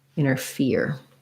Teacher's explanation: my stress is on the ear